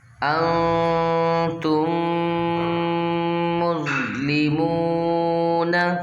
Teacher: میم ساکن کے بعد دوسری میم ادغام شفوی یعنی غنہ کریں گے